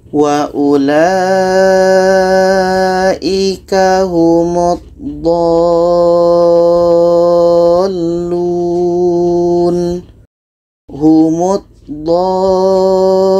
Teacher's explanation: do ini kita panjangkan 6 harakat baru masuk ke huruf la. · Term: mat lazim kilmi mutsaqqal